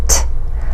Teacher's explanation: made with the tongue behind our teeth on the ridge above our upper teeth